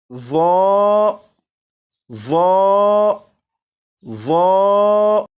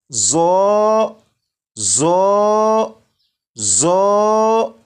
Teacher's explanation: अगर किसी ने सीटी की आवाज़ के साथ इसे पढ़ा तो ये दुरुस्त नहीं होगा, बल्कि इसे बगैर सीटी की आवाज़ के पढ़ेंगे।